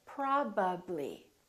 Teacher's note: my upper lip and my lower lip are working B so when I say probably we have a PBB probably my lips have to open and close three times